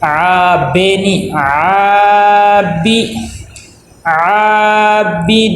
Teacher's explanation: با کے نیچے زیر ہے اور زیر حرکات غیر مدہ میں سے ہے، اس کو لمبا نہیں کرنا اور مجہول بھی نہیں پڑھنا